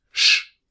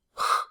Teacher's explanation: we have a front SJ sound, pronounced sh, and a back SJ sound, pronounced h